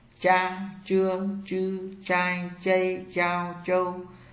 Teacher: ZH cong lưỡi không hơi trở nhẹ.